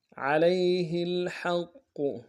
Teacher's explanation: حق میں علیہ الحق ہاں کو گہرے سے ادا کرتے ہوئے قوف کے سامنے لانا ہے. قوف کے اوپر تشدید زور دیں گے اور قوف کو موٹا ادا کریں گے